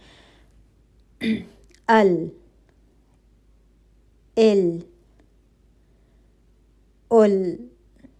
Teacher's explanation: हो रही है अल इल ल क्या महसूस हो रहा है जी हवा का चलना महसूस नहीं हो रहा है तो लाम के अंदर जाहर की क्वालिटी है · जबान के दोनों किनारों में से किसी एक किनारे का आखिरी हिस्सा हल्का सा मुड़ता हुआ ऊपर सामने के दांतों के पीछे नरम मसूड़ों पर लगे तो हर्फ लाम अदा होगा